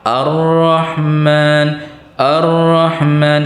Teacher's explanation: bila pian memulai dari Ar-Rahman maka hamzahnya jadi fathah a. Walaupun kedada tulisannya di Quran, di Quran hamzahnya fathah. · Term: hamzah wasal